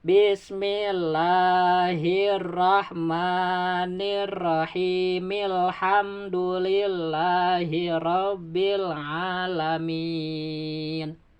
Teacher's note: Kalau disambung ya, hi dibaca 2 harkat, disebutnya mad tabi'i.